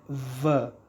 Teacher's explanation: the lower lip touches your upper row of teeth. So if your uh, lower lip doesn't touch your upper row of teeth, you cannot produce these two sounds, fa and va.